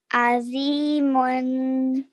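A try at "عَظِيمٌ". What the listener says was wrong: Okay, so remember, Zo is one of our thick sounds. So we have to try and make a little bit of a thicker sound when we're saying it, okay? Azimun.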